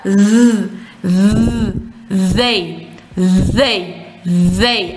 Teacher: Язык между зубами распластан. Пропускаем воздух и подаем голос. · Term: звук th